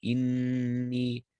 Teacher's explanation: Just make sure you hold the ghunna on the noon.